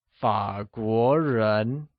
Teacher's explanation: fog war is pronounced with a falling rising tone on a